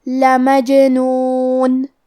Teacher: کلمت لمجنون میں کیونکہ حرف الجیم پہ جزم ہے تو ہمیں جیم کو قلقلہ سے پڑھنا ہے، مطلب ہم حرف الجیم کو ہلاتے ہوئے یہ کلمہ کو پڑھیں گے